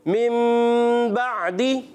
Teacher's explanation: نون ساکن تنوین کو میم سے بدل کر پڑھتے ہیں، اس کو کہتے ہیں اقلاب۔ کوئی اس کو اخفا کر کے پڑھتے ہیں، بعض مکمل طور پہ بدل دیتے ہیں۔